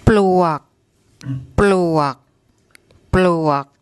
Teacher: So we've got the paw pla law ling consonant cluster, the bl, then the ua war wan, and then the gorgai, which acts as a, and when it's a final consonant, it's like an unreleased K sound